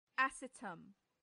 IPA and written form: əˈsiːtəm (acetum)